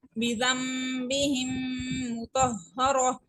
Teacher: میم ساکن کے بعد ایک اور میم آ رہی ہے، اس کی وجہ سے یہاں پہ ادغام شفی ہو رہا ہے، یعنی میم کو ہم میم کے ساتھ ملا رہے ہیں